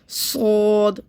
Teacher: सौद में क्या होगा कि हमें मुंह भर के पढ़ना है